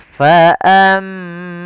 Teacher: ada mim berharakat tasydid, kita baca dengan bacaan gunah. Caranya adalah menahan suara mimnya.